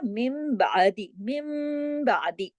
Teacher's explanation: नून साकिन के फौरन बाद अगर बा आ जाए तो वो बा जो है उसकी वजह से नून की आवाज मीम में बदल जाती है, इसीलिए इसको इकलाब का कायदा कहते हैं।